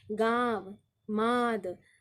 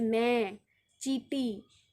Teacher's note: उच्चारण करते समय हवा नाक और मुख दोनों से निकलती है। इसका प्रयोग स्वरों के साथ होता है। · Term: अनुनासिक